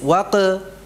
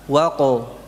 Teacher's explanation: Itu qalqalahnya gimana? Tebal, ya. Jadi bukan tipis, waqe, tetapi apa? Waqo.